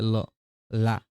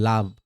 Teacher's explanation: দেখো ল কে বলা হয় পার্শ্বিক ধ্বনি মনে রাখবা। মানে ২ ঠোঁটের কাছ দিয়ে বাতাস জিভের পাশ দিয়ে বের হয়ে যায়।